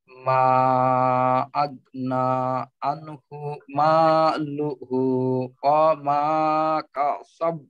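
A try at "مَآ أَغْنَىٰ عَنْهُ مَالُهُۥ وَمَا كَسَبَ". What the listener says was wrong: হুম, ওয়া মা, ওয়াওটা একটু লম্বা না করে ওয়া মা কাসাব, ওয়া মা কাসাব।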